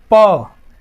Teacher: प जब बोलते हैं तो दोनों लिप्स आपस में एक बार चिपकते हैं।